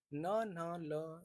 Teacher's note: जब इनका उच्चारण करने पर दांत के मसूड़े और दांत का जब प्रयोग होता है तो इसे वर्स्य व्यंजन कहते हैं।